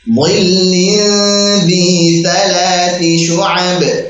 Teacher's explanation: Bukan dhilli, bukan dhi pakai dal tipis, tapi dhi pakai dha tebalkan